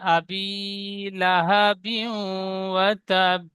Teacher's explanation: আবি বায়াজের বি ইয়া মাদ্দা একালিফ টান হবে।